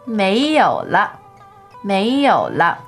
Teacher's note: So second tone, third tone, and la is neutral.